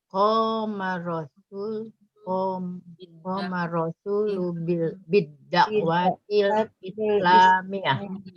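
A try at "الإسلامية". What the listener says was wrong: Ya-nya ada tasdid. Jadi kalau dia bertasdid itu miyah, beda dengan tarbiyah. Bukan tarbiyah. Ini bukan Islamiyah. Islamiyah itu bahasa Indonesia. Kalau bahasa Arabnya al-Islamiyah. Ya, karena dalam bahasa Indonesia nggak ada bunyi double ya dalam bahasa Indonesia.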